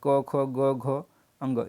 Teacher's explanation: कंठ से होता है क वर्ड, यानी कि क वर्ड के अंतर्गत जितने भी आएंगे क वर्ग के अंतर्गत उनका उच्चारण स्थान कंठ होगा।